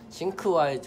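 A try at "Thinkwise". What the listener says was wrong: 네, 싱크와이즈 사실 싱크가 아니라 띵크입니다. 싱크와이즈 네, 번데기 발음 네, 띵크 네. 네 번데기 띵크와이즈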